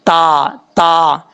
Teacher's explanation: یہ جو دو نقطوں والا تا ہے اس کا مخرج ہے، زبان کی نوک اوپر والے دانتوں کی جڑوں سے لگے تو تا پڑھا جاتا ہے